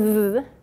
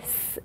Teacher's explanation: what's different in the z sound your voice box is on and otherwise s your voice is not on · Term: voiced and unvoiced pair